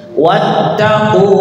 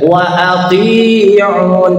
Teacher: Wattaquhu, ku-nya panjang ya, wa ati'un, ti-nya panjang, un-nya panjang. Un-nya panjang boleh 2, boleh 4, boleh 6 ya, namanya mad arid li sukun.